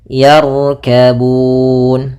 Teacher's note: di sini ada huruf ra tebal. Maka ro-nya kita tebalkan, bukan yarkabun, tapi dia tebal ro-nya, yarkabun.